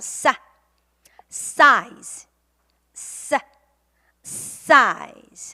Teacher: 사다 사 하고 바람을 훨씬 쪼여 주세요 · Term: S 발음